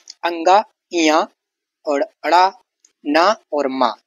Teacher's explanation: नाक से ध्वनि। सभी इनकी जो ध्वनि है वो नाक से निकलती है। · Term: नासिक के वर्ण